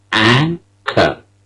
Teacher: K is a second syllable. The final R in the word is not pronounced. The first syllable, which is stressed, is an.